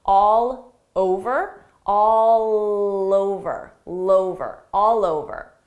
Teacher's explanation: I can link those sounds together by extending that L sound to the next word because it's a vowel.